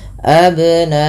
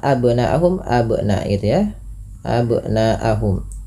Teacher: nanya dipanjangkan 4 atau 5 harakat yang kita hukumi dengan bacaan mad wajib muttasil